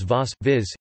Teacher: v is a labiodental v, like in English, rather than a bilabial. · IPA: /vɔs/